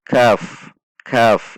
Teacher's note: Satu ketuk K1 ketuk perhatikan juga sifat dan makhroj huruf Kaf Kaf ada aliran udara saat mengucapkannya